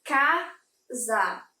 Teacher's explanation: Se eu falo a palavra casa, eu tenho essa terminação no A, mas a penúltima sílaba é a mais forte